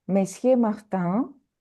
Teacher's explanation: Monsieur, we don't pronounce N.